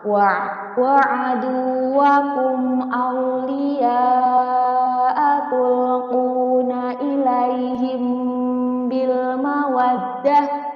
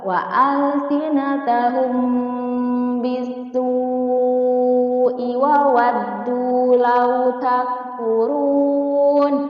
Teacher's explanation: Ikhfa syafawi ialah apabila terdapat mim sukun bertemu dengan huruf ba. Cara membacanya dengan menyamarkan antara bunyi huruf mim sukun ke huruf ba disertai juga dengan dengung